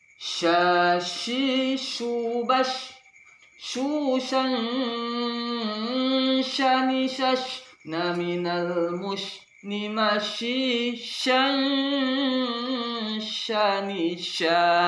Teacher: Suara agak menyebar, suara angin menyebar dengan kuat. Sya, mulut dimonyongkan, seperti kita ada ikan yang memonyongkan mulutnya, ikan mujair itu memonyongkan mulutnya ketika dia makan. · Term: huruf sya